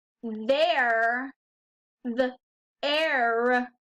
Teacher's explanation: We hear the R at the end, there, the air.